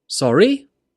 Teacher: When you use sorry, when you don't understand, we use the question intonation. Your voice goes down and then up. Sorry? By using this intonation, it shows that you're uncertain, therefore you don't understand.